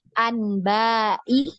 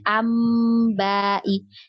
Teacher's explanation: Jadi kita tidak baca anbai ya, tidak kita baca seperti itu, tapi nunnya ini berubah menjadi mim ya, karena nun sukun tadi bertemu dengan huruf ba ya. Nah, maka dia berubah bunyi ambai ya, namanya gunnah ya, namanya di gunnah.